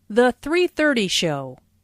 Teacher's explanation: Notice the emphasis on 3:30.